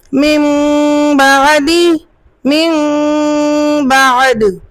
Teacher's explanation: نون ساکن کو چھوٹی سی میم سے بدل کر غنہ کے ساتھ پڑھا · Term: اقلاب مع الغنہ